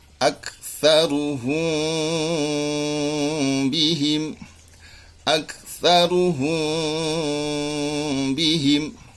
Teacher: ketika kita membaca mim sukun yang bertemu ba, maka bibir ini tetap merapat, cuman tidak terlalu ditekan atau sedikit merenggang, sedikit saja. Karena kalau terlalu merenggang, maka akan memunculkan makhraj huruf yang lain, maka akan menjadi salah jali. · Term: ikhfa syafawi